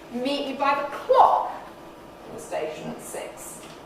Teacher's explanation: the nucleus now comes much earlier on early focus instead of end focus · because station six are now out of focus they're de-accented they're no longer important still got my same four stresses i've got two accents just